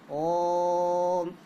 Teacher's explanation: ओ की ध्वनि को हमने थोड़ा और देर तक खींचा तो हम ऐसा मान लेते हैं कि इसमें 3 मात्रा के बराबर का समय लगा। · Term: प्लूत स्वर